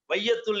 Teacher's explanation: அந்த ஐ என்கின்ற பொழுது 2 மாத்திரை விழிக்கின்றது. வையத்துள் என்கின்ற பொழுது வை என்பதற்கு 1½ மாத்திரை, அரை மாத்திரை குறைந்து விடுகின்றது. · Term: ஐகார குறுக்கம்